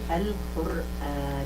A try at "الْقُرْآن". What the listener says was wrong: معلش تفخيم الراء. القرآن.